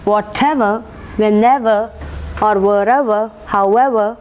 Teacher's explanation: stress will be marked on the ever